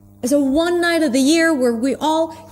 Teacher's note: He's not even pronouncing the TH. This is how he reduces it.